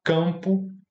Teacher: que esse a vira ã e nasaliza